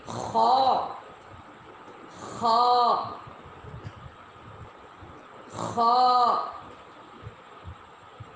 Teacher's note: اس کو پڑھتے ہوئے حلق میں رگڑ پیدا ہوتی ہے ، جیسے کوئی چیز ٹکراتی ہے کسی دوسرے چیز کے ساتھ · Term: نقطے والی خا